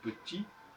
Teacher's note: Comme en français, quand on dit petit, on n'entend pas le T, on masque le T.